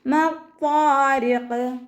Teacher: മത്വാരിഖ് വാ ഇസ്തിഅലാൻ്റെ ലെറ്ററാണ്, ഇത്ബാഖിൻ്റെ ലെറ്ററും കൂടിയാണ്. നല്ലോണം തഫ്ഹീം ചെയ്തിട്ട് നാവിൻ്റെ ബാക്ക് നല്ലോണം മുകളിലേക്ക് ഉയർത്തി കൊടുക്കുക കേട്ടോ. അലിഫ് മദ് കൂടെ വന്നിട്ടുണ്ട്, 2 കൗണ്ട് നീട്ടിക്കൊടുക്കുക.